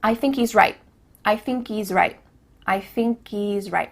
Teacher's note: at the end of the word right, there's no T sound